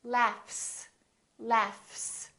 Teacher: this gh is actually an F sound right there's no vibration in my vocal cords so the F is actually a voiceless sound